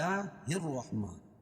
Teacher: اردو میں حروف شمسی وہ حرف ہے جن پر لام لفظی طور پر لکھا رہتا ہے مگر تلفظ میں استعمال نہیں ہوتا ہے۔ اور اس کو حروف شمسی کہتے ہیں۔